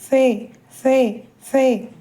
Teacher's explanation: இரு உதடுகளையும் சேர்க்க வேண்டாம் முன்பற்கள் கீழ் உதட்டின் ஈரமான பகுதி லேசாக தொட்டு கொண்டிருக்க வேண்டும் நாவு எலாமல் இருக்க வேண்டும் குரல் மிக மெல்லியதாக வெளிப்பட வேண்டும். பே பே